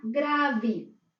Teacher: las palabras que terminan en E final, suaves, o sea que no tiene acento gráfico, se escriben con E, pero se pronuncian con I